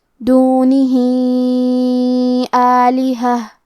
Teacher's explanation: یہ مد صلہ کبریٰ ہے، ہم اپنی آواز 2 سے 4 مد کے برابر لمبی کریں گے